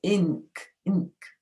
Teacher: In ink, the awkward bit is that the N, it has actually an ng sound, but it's written with just an N